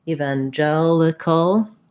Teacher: main stress is on the gel syllable